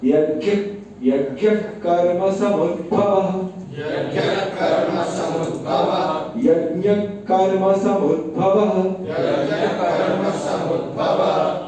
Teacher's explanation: विसर्ग का उच्चारण नहीं होता है, वो हल्का सा ब्रेक वहां पर लेना होता है